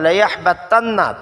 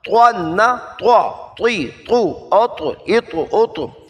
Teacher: تو کو موٹا کرنا ہے، تا سے الگ کرنا ہے